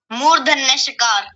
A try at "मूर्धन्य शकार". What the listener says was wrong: मूर्धन्य तो सही बोला शकार ठीक से नहीं बोला गया